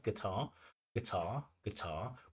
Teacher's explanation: The stress should be on the second syllable